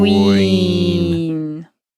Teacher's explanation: it's it's almost like it's a w sound cool Queen so we start out with kind of a rounded o sound I suppose and then end up with a e sound at the end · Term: diphthong